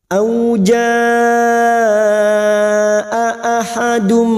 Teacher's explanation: lima harakat kita panjangkan auja ahadum dua huruf hamzah jangan diseret dua huruf hamzah ini memiliki sifat sidah yaitu tertahannya suara ketika mengucapkan huruf tersebut · 2 huruf hamzah ini memiliki sifat siddah, yaitu tertahannya suara ketika mengucapkan huruf tersebut. Auja ahadum, ahadum, duma tanwin bertemu mim, idgham bi gunnah.